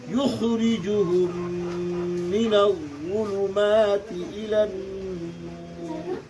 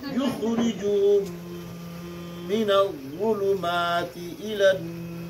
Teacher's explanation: मीम साकिन के बाद मीम आया, इसलिए मीम को मीम से मिलाकर पढ़ेंगे।